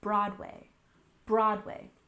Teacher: Next, we have Broadway. We emphasize the first syllable, Broadway, Broadway.